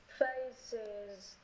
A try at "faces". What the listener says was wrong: Đọc nhanh thầy, đừng bị faces. Faces. Đừng có xịt em, đừng có xịt, đừng có xịt. Sees, chứ đừng có xịt. Sees.